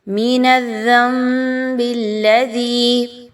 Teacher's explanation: آپ نے نون کی آواز کو میم کی آواز میں بدل دینا ہے ود غنہ۔ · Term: اقلاب